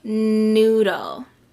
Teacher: my teeth are touching and i can feel my throat do a vibration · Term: n sounds